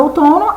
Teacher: na nossa última palavra, outono, a sílaba que eu falo mais forte é o to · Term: sílaba tônica